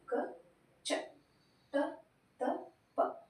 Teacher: ನಾವು ಜಾಸ್ತಿ ಉಸಿರು ತಗೋದಿಲ್ಲ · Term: ಅಲ್ಪಪ್ರಾಣ